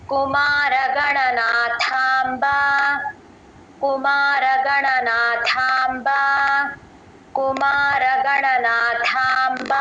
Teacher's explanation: మహాప్రణం థా లాగా చెప్పాలి